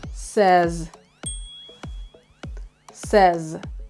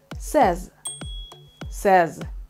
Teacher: it's with the letter z in the end it's not an s it's not says i know it's spelled s-a-y-s but it's pronounced